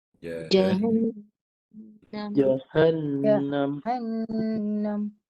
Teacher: Dua harakat tu ketika suara di hidung. Masa jahan tu, semua suara di rongga hidung. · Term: dengung